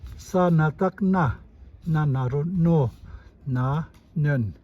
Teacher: If we add superscript na, sa on top of na, it raises the tone.